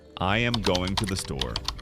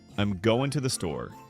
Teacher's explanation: Every word is equally stressed. It sounds robotic. · Some words are reduced and the stress is on going and store. This sounds much more natural.